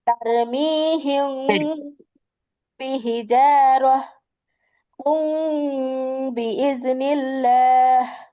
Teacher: আমি কিন্তু নাকের ভিতরে লুকায়া গুন্নাটা করছি অনেশ্বরের মতো কইরা